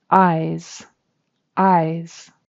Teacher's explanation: So that's a final Z. That's a voiced Z sound. Z, Z. So it's the eyes that I see with.